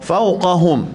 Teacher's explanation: Okey, boleh awalam yarau ila at-tayri fawqahum fa lembut, fawqahum sini qaf tebal, jangan bunyi qaf tu jadi kaf. Ada orang baca fawqahum, tak boleh.